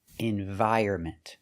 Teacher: And the last one is ment. So the N is silent. You don't pronounce the N.